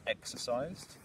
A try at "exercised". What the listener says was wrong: Try exercised. Again, but like a softer end.